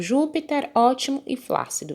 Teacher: Ju é a sílaba mais forte, ó é a mais forte e flá é a mais forte. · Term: proparoxítonas